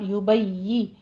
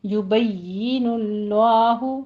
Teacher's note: پھر یبجی نہیں ہوگا، یبین اللہ، تشدید ادا کریں لیکن جیم شین میں نہ کنورٹ کریں اس کو